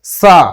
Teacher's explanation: এই স আমাদের দাঁতের সাহায্যে উচ্চারণ করতে হয়, জিভকে দাঁতের সাথে স্পর্শ করে উচ্চারণ করতে হয়। অর্থাৎ এই স্বয়ের উচ্চারণ হবে এরকম সা, অনেকটা ছয়ের মতো, মানে দাঁত আর জিভ টাচ করে উচ্চারণ করতে হবে সা। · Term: দন্ত স